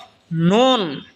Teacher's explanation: নুন জিহ্বার আগা তার বরাবর উপরে তালের সঙ্গে লাগা উচ্চারণ হবে নুন।